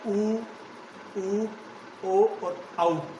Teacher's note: आप देख लीजिए उनका उच्चारण करके, यानी जब हम इनका उच्चारण करते हैं तो हमारे होठों की जो आकृति होती है वो वर्त की तरह गोल हो जाती है। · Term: वर्ताकार स्वर